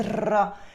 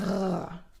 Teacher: he rolls his R's in a very non-French way